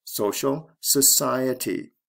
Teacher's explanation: stress goes from the first to the second syllable